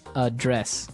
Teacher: the verb address has the stress on the second syllable